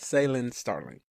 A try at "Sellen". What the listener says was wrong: See, you're putting an AI in there. There's not supposed to be an AI in it. It's Sellen.